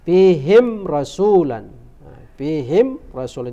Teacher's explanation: tidak boleh kita dengungkan harus dibaca nyata dan jelas izhar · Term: izhar syafawi